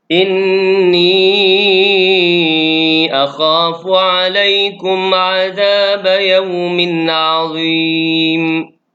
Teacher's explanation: Dan di penghujung dari ayat ini, ayat 59, azim. Hukum dia mad arid li sukun, boleh baca 2, boleh baca 4, boleh baca 6.